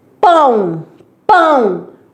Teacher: O o é semivogal. Quando falar pão, esse o saiu som de u.